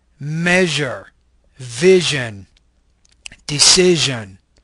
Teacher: Zh, measure, vision, decision. This is a palatal fricative voice consonant.